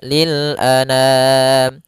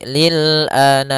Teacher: Jangan dibaca dengan dengung atau dibaca dengan masuk hidung